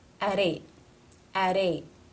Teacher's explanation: it is a T at the ends of a word, not part of a consonant cluster. It's a stop.